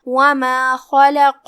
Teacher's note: ہم خا کو بھاری آواز میں پڑھیں گے، پھر لام کو پتلی آواز میں، پھر قاف کو پھر سے بھاری آواز میں